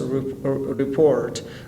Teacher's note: A report is a verb form when the stress goes to the second syllable.